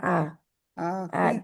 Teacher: आ आ दो दो हरकात के बराबर खींचा जाएगा इसको